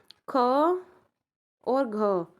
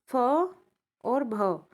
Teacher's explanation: जिनको बोलने में मुख से अधिक वायु निकलती है और प्रत्येक वर्ग के द्वितीय चतुर्थ वर्ण हमारे महाप्राण कहलाते हैं